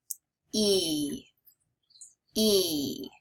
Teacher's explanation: This is a long vowel sound. You want to spread your lips like you're smiling and pull your tongue back. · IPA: /iy/